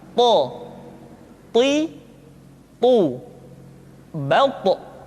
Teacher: To diucapkan dengan menyentuhkan ujung lidah dengan gusi-gusi dua gigi seri bagian atas. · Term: huruf to